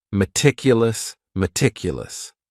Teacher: this word has four syllables and the stress is on that second syllable meticulous meticulous that first syllable also has that schah that a